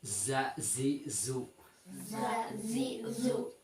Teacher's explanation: ketiganya keluarnya dari ujung lidah yang hampir bertemu dengan gigi depan bagian bawah. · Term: huruf sin, huruf zai